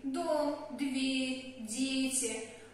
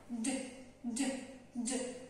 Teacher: Когда мы произносим русские слова, например, «дом», «дверь», «дети», наш язычок упирается сразу в зубы. А вот, чтобы у нас получился английский звук «д», нужно язычок немножечко наверх, чтобы он едва касался неба.